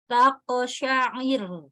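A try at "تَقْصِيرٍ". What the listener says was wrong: Kurang roknya enggak tasydid itu kalau kayak gitu. Jadi R-nya ditahan, betul. Jadi waqaf di tasydid itu lebih susah.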